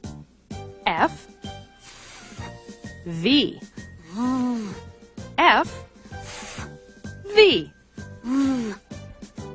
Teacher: Your teeth touch your lip to make the sounds of F and V.